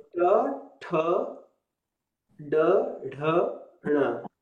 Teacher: my tongue is twisted and is touching the roof of the mouth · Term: retroflex